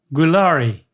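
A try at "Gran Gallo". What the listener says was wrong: But you're putting an L in it. I don't see an L at all. Sound it out.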